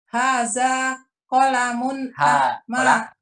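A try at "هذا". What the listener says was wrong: Hadza, la. Ujung lidahnya tentukan ke gigi atas.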